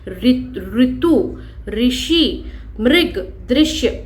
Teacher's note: हिंदी में आने के बाद स्वर के रूप में इसका उच्चारण समाप्त हो गया। ठीक है, हिंदी भाषा इसका उच्चारण र हलंत ई री के रूप में करने लगे हैं